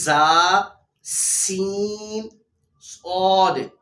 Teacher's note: ان 3 حروف یعنی زا، سین، صاد کو ادا کرتے وقت سیٹی کی طرح تیز آواز نکلتی ہے، اس لیے ان حروف کو حروف صفیریہ یعنی سیٹی والے حروف کہتے ہیں۔